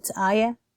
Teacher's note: So I have a softer H sound at the end, whereas in Lebanese Arabic, pronunciation, it's ayah. So there's a stop at the A.